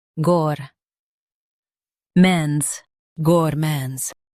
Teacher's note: Stress mon and keep gour smooth.